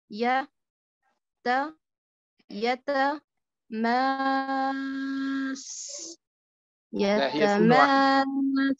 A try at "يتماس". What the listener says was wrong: سين واحدة. سين واحدة، لا تنطقي الثانية، يعني لا تأتي بهمس طويل.